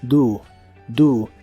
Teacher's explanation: la o se pronuncia como una u